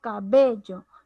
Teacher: El acento de estas palabras recae en la penúltima sílaba de la palabra. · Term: paroxítona